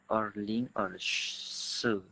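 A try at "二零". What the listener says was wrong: Ya, lebih ini nada keempat, jadi harus lebih tegas. Erling, se gitu.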